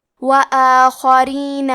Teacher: کلمت وآخرین میں حرف الخاء کی ادائیگی حلق کے اوپر والے حصے سے ہے، خاء حروف التفخیم میں سے ہے، تو ہم یہ حرف کو موٹی آواز میں پڑھیں گے۔ · را کے نیچے زیر ہے، یہاں را کا حکم ہے ترقیق، تو ہمیں حرف را کو پتلی آواز میں پڑھنا ہے